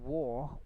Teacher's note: the R, if it come at the end of the words, it will be silent. It won't be pronounced in RP accent.